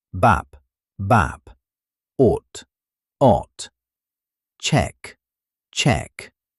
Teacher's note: Notice how each one ends firmly. No trailing sound, no extra vowel. Just stop, sharp, controlled.